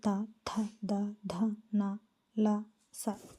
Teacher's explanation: దంత్యముల నుండి పుట్టిన వర్ణములను దంత్యములు అందురు